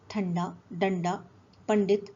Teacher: यदि अनुस्वार टा वर्ग के वर्णों से पहले हो तो उसका उच्चारण ण के समान होता है